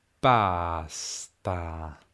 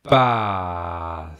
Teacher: Hai sentito quel silenzio poco prima dell'esplosione della P, ma anche della T subito dopo? Basta. Quella pausa, soprattutto prima della P, può sembrarti strana, ma in realtà esiste anche nella realtà, solo è così breve che non ce ne accorgiamo.